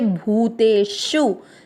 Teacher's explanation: भू पर बड़े ऊ की मात्रा लंबा खींचेंगे, भूतेषु। शु में षटकोण पे जोर देना है लेकिन ऊ की मात्रा को खींचना नहीं है।